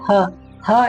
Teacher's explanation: ಹ ಎನ್ನುವಂತಹ ಅಕ್ಷರವನ್ನ ಉಚ್ಚಾರ ಮಾಡಬೇಕಾದರೆ ಅದು ಗಂಟಲಿನ ಸಹಾಯದಿಂದ ಉಚ್ಚಾರ ಆಗುತ್ತೆ